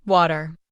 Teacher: In American English, we often say water with a soft D sound in the middle. In British English, it might sound like wada.